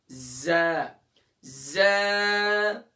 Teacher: زبان کا سرا اور دونوں دانتوں کے اندرونی کنارے سے